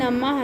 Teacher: विसर्ग का उच्चारण जो होता है वो उसका उच्चारण हा होता है